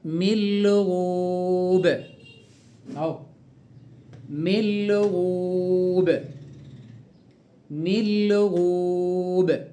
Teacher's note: نون ساكنة بعدها اللام، واللام من حروف الإدغام بغير غنة. إدغام النون في اللام بس بغير غنة خالص، فيش غنة